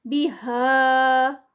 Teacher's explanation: یہاں پر مدے منفصل ہے 4 کاؤنٹس کا اسٹریچ آئے گا